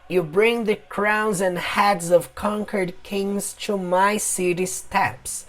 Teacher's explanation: na hora que o personagem pronuncia, ele pronuncia o termo city de uma forma mais forte, porque ele está intimidando, né, o personagem na frente dele.